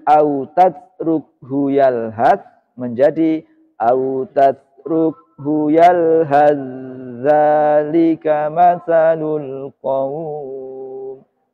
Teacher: Bertemunya tak sukun dengan zal. Menjadi dari autatrukhu yalhath menjadi autatrukhu yalhath zalika matsalul qaum. Jadi taknya hilang sama sekali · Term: idgham mutaja nisain